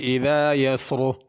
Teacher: اذا میں ذال ہے، اذا زا کر کے نہ پڑھا جائے۔ یسر، رکیں گے تو را پر ہوگی، اگر ملا کے پڑھیں گے تو پھر را باریک ہوگی۔